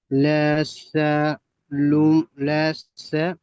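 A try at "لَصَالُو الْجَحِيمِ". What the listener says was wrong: সা নয়, সদ, সদ অক্ষর মুকল করে পড়তে হবে, লা সলুল জাহিম। লাসলুল জাহিম, যা টান হবে না, লাম টান হবে না, সৎটি একালিফ টান হবে, আলিফ মাদ্দা।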